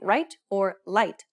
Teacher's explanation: the english r will be rendered like an l sound essentially making it no different as to whether you're saying right or light to tie speakers